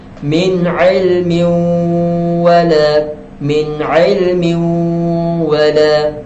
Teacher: Kemudian waw disebabkan tanwin bertemu waw, maka kita kena bunyikan waw tu dalam tanwin tu. Tanwin tu masuk ke dalam waw lah. Jadi kita kena muncung mulut.